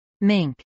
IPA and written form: mɪŋk (mink)